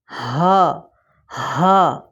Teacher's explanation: اس کو ہم پڑھیں گے ہا، ہا، سینے والی سائڈ سے نکلتی ہے یہ ہا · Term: بھاری ہا